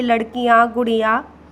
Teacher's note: बच्चों अनुनासिक और अनुस्वार में अंतर सिर्फ यही है कि अनुनासिक में, अनुस्वार में केवल नाक से हवा निकलती है और अनुनासिक में नाक और मुंह दोनों से हवा निकलती है